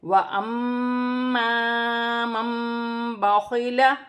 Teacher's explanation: نون ساکن کے بعد اگر قرآن پاک میں با آ جائے تو وہاں چھوٹی سی میم لکھی ہوتی ہے، نون ساکن کی آواز کو میم سے بدل کر غنے کے ساتھ ادا کیا جائے گا